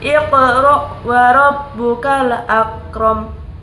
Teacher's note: Ayat ketiga, makhraj huruf qaf adalah pangkal lidah bagian dalam. Makhraj huruf kaf adalah pangkal lidah bagian depan.